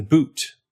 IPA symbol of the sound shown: ʊu